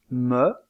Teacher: il y a blocage de l'air au niveau des deux lèvres aussi appelle-t-on cette occlusive une occlusive bilabiale dans le cas de